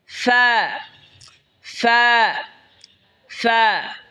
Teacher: ঠোটের পেট সামনের উপরে দুই দাঁতের আগার সঙ্গে লাগে উচ্চারণ হবে ফা